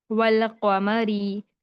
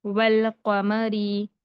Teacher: वाव को डायरेक्ट लाम से मिलाकर पढ़ा जाता है, अलिफ को पढ़ा नहीं जाता। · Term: हुरूफ कमरी